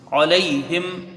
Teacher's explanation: لام یا زبر لئی، یا لین ہے، اس کو بھی حروف مدہ سے کچھ کم پڑھا جائے گا